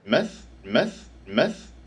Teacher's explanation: New Zealanders tend to centralize this sound. So instead of the tongue being arched up a little bit towards the front of the mouth, it's relaxed down a little bit towards the middle of the mouth. And you get something closer to a schwah. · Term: kit vowel